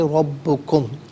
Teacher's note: ربکم، را پر زبر ہے، را کو پر کر کے پڑھیں گے، با مشدد ہے، جماؤ کے ساتھ پڑھیں گے، ملا کر پڑھیں گے ربکم۔